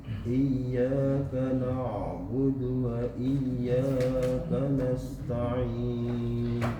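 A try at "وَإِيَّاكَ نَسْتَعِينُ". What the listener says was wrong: Lebih kecil lagi desisnya Pak. Kanasta'in.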